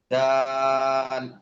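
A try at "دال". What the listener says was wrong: আর একটু টান দিয়ে বলেন।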